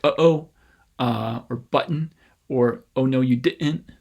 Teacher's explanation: instead of raising the tip of your tongue up to the roof of your mouth and mitten for that t you can just close off your vocal folds · it's a glottal stop rather than a genuine t but at the same time it's an allophone